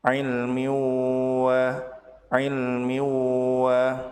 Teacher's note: Tanwin bertemu dengan waw disebut sebagai idgham bi gunnah, yaitu tanwin dilebur ke huruf waw disertai dengan gunnah dan ditahan 2 harokat